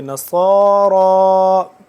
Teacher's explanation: موٹا پڑھیں گے اس کو اور سیٹی کی آواز نکلے گی صاد کی، اور را بھی موٹا کر کے پڑھیں گے.